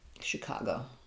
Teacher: it's middle syllable stress